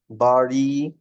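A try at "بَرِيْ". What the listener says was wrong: রিড একটু টান হয়ে গেছে, প্লাস হচ্ছে বাড়ি, বাড়ি না, রিড, রিতে স্টিল টান হচ্ছে, বাড়ি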